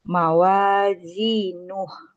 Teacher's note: Nunnya jangan dipanjangin. Mawazinuh langsung dipotong. Oh, iya. Mawazinuh.